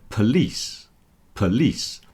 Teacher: the stress has moved to the second part, so that lis is longer than the second part of polish, and the po is contracted down to a p, police, police, and it ends in a s, not a sh.